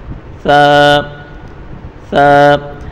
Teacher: ثا کو بالکل نرمی کے ساتھ پڑھیں گے، سیٹی والا آواز بالکل بھی نہیں آنا چاہیے اس میں، ثا بالکل نرم پڑھیں گے، ثا ثا۔